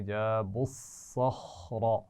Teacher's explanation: صخرہ میں تینوں آوازیں موٹی ادا کریں گے